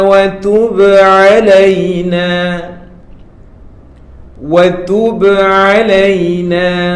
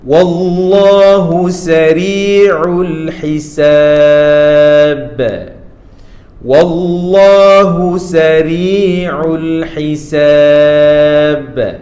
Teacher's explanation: Yang ada tanda sukun ni tuan puan pasti dan pasti ini yang akan menyebabkan huruf ba ini bersifat qalqalah iaitu melantun ataupun memantul.